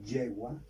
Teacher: Si encontramos una palabra que lleva Y al final, solamente al final, porque si yo escribo yegua, aquí esta Y ya es una consonante, ya no suena como I latina, sino como una consonante Y, porque uno la lengua con el paladar